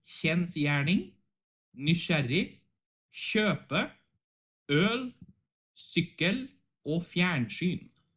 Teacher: so the KJ is like a sh sound